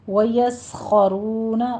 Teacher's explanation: وَيَسْخَرُونَ میں بھی سین کو آپ نے سیٹی کی آواز نکالنی ہے اور باریک رکھنا ہے، خو کو پر کرنا ہے، ویوس نہیں کہنا، وَيَسْخَرُونَ خو بھی پر ہے، رو بھی پر ہے، آگے واو مد ادا کرنی ہے، وَيَسْخَرُونَ۔